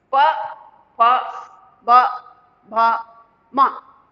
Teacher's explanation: अब इसको देखो, जब हमने इनको बोला तो हमारे दोनों ये होठ ऊपर नीचे के लिप्स, ये आपस में मिलते हैं तब ये ध्वनियां निकलती हैं